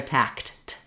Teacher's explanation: for the word tact the k sound is a voiceless sound